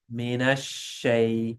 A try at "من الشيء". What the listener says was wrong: You're still holding the spreading. Mina shay, mina shay.